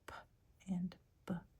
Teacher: They're both bilabial plosives. So that just means you use both of your lips and you build up pressure before producing the sound.